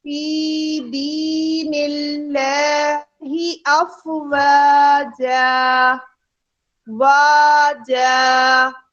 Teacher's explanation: دی بھی ہمارے پاس حروف مدہ ہے. یا ساکن سے پہلے زیر اور اللہ کے لام سے پہلے بھی زیر ہے, اس لیے ہم اللہ کا لام باریک ادا کریں گے. فی دی دونوں حروف مدہ کو برابر ادا کیا.